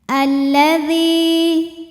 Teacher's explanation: karena alif lam menghadapi huruf syamsiyah yaitu lam, maka alif lam tidak dibaca